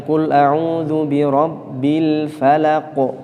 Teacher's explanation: qafnya di belakang ini memiliki sifat khusus namanya qalqalah, maka harus kemudian ditampilkan